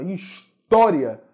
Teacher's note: a sílaba tônica da palavra é a penúltima